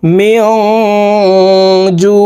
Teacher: জের মেয়ং নুন সাকিনের পরে ইকফার হরফ জিম আসছে এই কারণে এই নুন সাকিনকে নাকের ভিতরে লুকাইয়া গুন্নার সহিত পড়ব